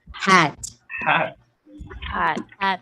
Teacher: Okay, voiceless glottal fricative